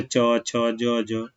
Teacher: च वर्ग को हम लोग स्पर्श संघर्षी बोलते हैं